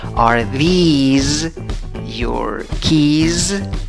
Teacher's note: y larga con Z al final